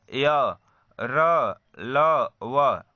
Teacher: ऐसे व्यंजन जिसको हम बोलते हैं तो जीभ, तालु और दांत, ओठ का स्पर्श होता है लेकिन वह पूर्ण रूप से उसे स्पर्श नहीं करता, उसी को हम अंतस्थ व्यंजन कहते हैं।